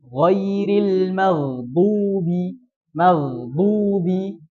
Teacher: samping lidah itu menekan di gigi geraham atas. Dua-duanya atau salah satu. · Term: huruf do